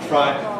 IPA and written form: fraɪ (fry)